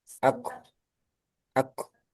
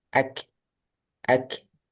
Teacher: Nah, yang pertama tebal. Aku, aku. Yang kedua tipis. Ak, ak.